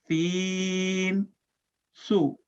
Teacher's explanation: سین کی آواز سیٹی کی سی آواز ہوتی ہے